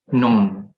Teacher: So you don't pronounce the K in front of known. It just act like this, the K in the word known is disappear.